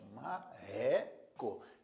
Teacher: a segunda sílaba, a sílaba do meio neste caso aqui, é a mais forte. Marreco. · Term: sílaba tônica